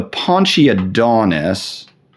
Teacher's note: That's only 2 stressed syllables. There's not a third in there.